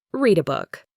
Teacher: See how the D links to the A.